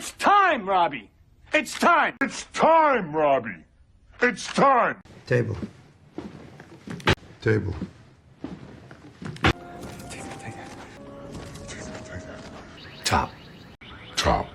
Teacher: حرف التي حرف انفجاري، يعني لازم يطلع شويه هوا كده وانت بتنطقه. فتيجي تقول time table، طرف اللسان بيلمس سقف الفم وبعدها بيطلع صوت الت بنفخه كده صغيره. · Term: التي الصريحه